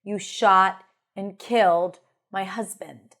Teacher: So the stressed words, shot and killed my husband. · So we have the lax I in the word killed, right?